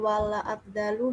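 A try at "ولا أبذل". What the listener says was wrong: Wala abdulu, zalnya dhamma bukan fathah ya. Jadi dibaca wala abdulul ilma, dan tidaklah saya mencurahkan ilmu.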